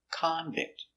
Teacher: It's a noun, so stress on the first syllable